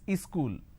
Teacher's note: in places like uh up bihar jharkhand they add another syllable